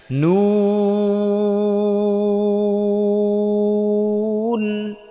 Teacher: ঠোঁটটা রাউন্ড করতে হবে, গোল করে দিতে হবে, একেবারে চোকা করে একেবারে সামনে, যত সামনে আনতে পারেন সামনে নিয়ে আসবেন।